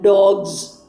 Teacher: in the word dogs, we should not pronounce this as usual S pronunciation. It is morphed into the pronunciation of Z